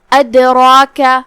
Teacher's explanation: وما ادراک کلمت ادراک یہاں دال پہ جزم ہے تو دال کا حکم ہوا قلقلہ. ہم دال کو ہلاتے ہوئے یہ کلمہ کو ادا کریں گے · را کا حکم ہے تفخیم کیونکہ اس کا حرکت ہے زبر. ہمیں را کو بھاری آواز میں پڑھنا ہے. پھر اس کے بعد جو کہ مد الف ہے تو ہم مد الف کو بھی تفخیم سے ادا کریں گے کیونکہ مد الف اپنے پیچھے والے حرف کا حکم لیتا ہے، تفخیم ہو یا ترقیق.